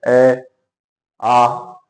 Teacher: ए और आ, ये दोनों का उच्चारण स्थल कंठ है, इसलिए इन्हें कंठ ध्वनि कहा जाता है।